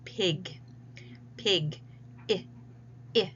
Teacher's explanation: the tongue is high towards the roof of the mouth. It is forward towards the front of the mouth. The mouth is closed. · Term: I phone